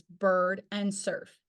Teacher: o r Ur is made in the mid Central rounded vow the tongue is mid height and Central in the mouth with rounded lips followed by the r sound